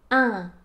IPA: ɛ̃